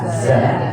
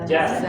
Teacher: Bukan ja tapi za. Za dari ujung lidah. Kalau ja dari tengah lidah.